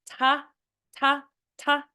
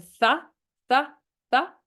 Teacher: T is more explosive you can't like hold that sound for very long you kind of it's a little difficult to hold a th